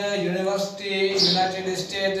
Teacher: जेकॾहिं पाण यूनियन लिखियो तो उच्चार करें तो अचे यू, माना कॉन्सोनेंट जो आवाज अचे।